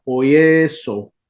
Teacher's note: Poie, al agregar la s, la sigma, más la desinencia queda en poieso. Observen que la epsilon, que es la e corta, se alarga a una eta